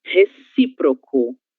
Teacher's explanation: sílaba tônica si. Temos o acento agudo nessa palavra